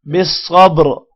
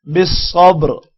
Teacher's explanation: اگر وقف کرنا ہو تو را ساکن بن جائے گا، بالصبر، اور را کو موٹا پڑھیں گے